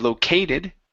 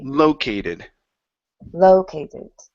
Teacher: The stress is at the very beginning instead of located.